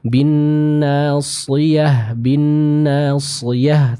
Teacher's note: terdengar dengan jelas ketebalan yang ada pada huruf shad ini